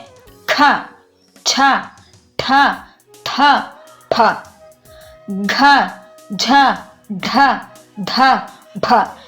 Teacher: ಹೆಚ್ಚು ಉಸಿರಿನೊಂದಿಗೆ ಉಚ್ಚರಿಸಲ್ಪಡುವ ಅಕ್ಷರಗಳನ್ನ ಮಹಾಪ್ರಾಣ ಅಕ್ಷರಗಳು ಎಂದು ಕರೆಯುತ್ತೇವೆ